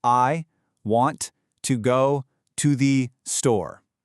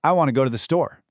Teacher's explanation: Those boundaries between the individual words literally just vanish. The entire rhythm of English depends on this exact kind of connected speech.